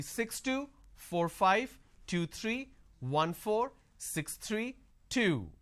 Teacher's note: the last unit of your string should be louder, but a drop tone. · My volume went up, but my tone, my intonation is flat.